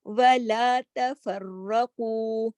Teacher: نہ تا موٹا ہے نہ فا موٹا ہے، را موٹا ہے، قاف موٹا ہے